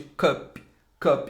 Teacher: vai ter um som mais curto, vai ter um som de hã, que é o schwa